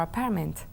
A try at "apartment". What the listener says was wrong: Apartment. La T se oye.